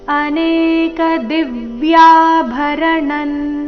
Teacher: ಅನೇಕ ದಿವ್ಯ ದಿ ಮೇಲೆ ಆಘಾತ ಯ ದೀರ್ಘ